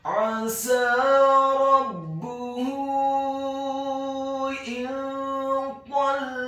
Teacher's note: Ingat, bukan 2 harokat, tetapi 4 sampai 6 harokat, karena harokat dhammah pada huruf H adalah harokat dhammah yang terbalik, dan di atas harokat dhammah yang terbalik pada huruf H ada harokat bendera. Maka huruf H-nya dibaca tafkhim tebal dhammah 4 sampai 6 harokat.